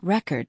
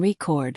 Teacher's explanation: we stress the first syllable in record, noun, but the second syllable in record, verb